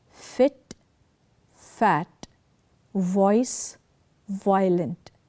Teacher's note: the upper teeth and the lower lip come together in the articulation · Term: Leo Dental